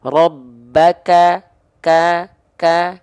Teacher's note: kita hanya lafalkan cukup dipercikan nafas saja bukan mengalir nafas ya ahah bukan percika bukan mengalir nafas tapi hanya berupa percikan-percikan